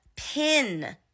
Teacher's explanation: where I come from in Texas we say the I sound the short I sound for the e sound a lot